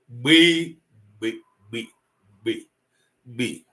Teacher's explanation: the air with which I pronounce it seems to be sucked in not um released explosively.